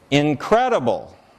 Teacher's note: So the second syllable there has a little bit of stress, right? A little bit extra amplitude, more sound. It's louder.